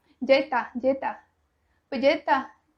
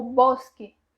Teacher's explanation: E esse S eles tiram completamente da palavra, como outras, como bosque.